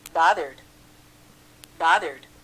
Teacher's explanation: established, established, 다음 드음을 제외한 유성음으로 끝나면, 즉 성대가 울리는 소리로 끝나면 드로 발음한다